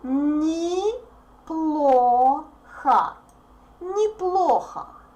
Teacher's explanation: Unstressed O represents A sound.